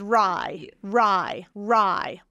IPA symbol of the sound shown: raɪ